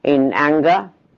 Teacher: the velar nasal is followed by a G. This is devoiced, this is devoiced, the R is devoiced, the L is devoiced.